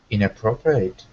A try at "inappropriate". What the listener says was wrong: Good, except at the very end, it looks like eight, but it's pronounced just like the word it, inappropriate.